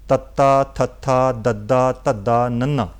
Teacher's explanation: ਜਦੋਂ ਤੁਸੀਂ ਬੋਲੋਗੇ ਤੁਹਾਡੀ ਜੀਭ ਜਿਹੜੀ ਹੈ ਦੰਦਾਂ ਨਾਲ ਛੋਹੇਗੀ ਜੀ। ਤੁਸੀਂ ਬੋਲ ਰਹੇ ਹੋ ਤੱਤਾ, ਥੱਥਾ, ਦੱਦਾ, ਧੱਦਾ, ਨੰਨਾ ਜੀ, ਇਹ ਦੰਤੀ ਧੁਨੀਆਂ ਨੇ ਜੀ।